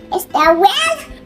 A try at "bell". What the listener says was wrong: This is L. Not well. L. Bell.